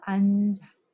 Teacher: 앉아에 니은 지읒 있죠? 지읒이 뒤로 넘어가요.